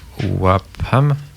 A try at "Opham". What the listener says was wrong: Opham. Il n'y a pas de A là-dedans. Opham.